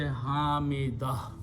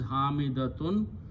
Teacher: Hamidah is a feminine name, but the full word is Hamidatun. When we stop, we convert the ta into ha.